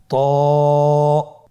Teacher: এটা উচ্চারণের সময় অবশ্যই মোটা করতে হবে এবং উচ্চারণ করার সময় এক আলিফ টেনে পড়তে হবে